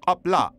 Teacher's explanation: getting used to pronouncing K with your uvula, that weird cartoony thing hanging in the back of your throat